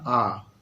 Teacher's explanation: মাঝামাঝি একটা জায়গায় থাকে, তাকে বলা হয় কেন্দ্রীয় স্বরধ্বনি